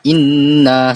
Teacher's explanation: Panjang harakatnya 2 atau 3 harakat dan kena baca dengan dengung. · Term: wajibul gunnah